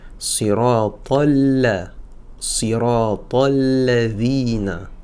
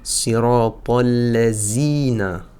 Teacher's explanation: Le dhal ici a besoin que la langue vienne se positionner un petit peu entre les dents ou juste derrière et on fait vibrer les cordes vocales.